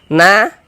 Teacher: Sebelum alif ada tanda baca fathah, maka huruf yang memiliki tanda baca fathah kita baca panjang, sehingga na kita baca panjang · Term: mad tabi'i